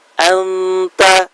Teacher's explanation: bacaannya samar, nunnya tidak jelas, tidak dibaca secara jelas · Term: ikhfa